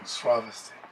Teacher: I give a bit too much stress on the first syllable, just because it's long.